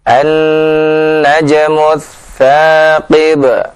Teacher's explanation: tha yang keluar dari ujung lidah dengan gigi seri atas